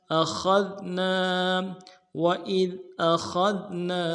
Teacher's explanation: کریں گے، وَإِذْ أَخَذْنا، حمزہ کو نرم سے ادا کرنا ہے، خا کو دال کے ساتھ ملانا ہے، خا کو موٹا کریں گے، دال کو باریک کریں گے